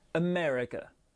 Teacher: c'est la deuxième syllabe qui est accentuée